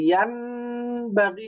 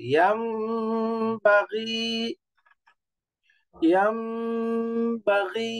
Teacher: যেমন একটা শব্দ হলো ইয়াং বাগি, এই যে ইয়ান বাগি নুন দিয়ে পড়া যাবে না, এটা মিমের মতো হয়ে যাবে, ইয়াম বাগি, ইয়াম বাগি, এই যে বাগি, বেসিক মাদ, ইয়া মাদ, কাসরার পরে ইয়া সুকুন, তো এই জন্য মাদ করতে হবে, আর এখানে গুণনা করে ইয়াম বাগি, ইয়াম বাগি। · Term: ইকলাব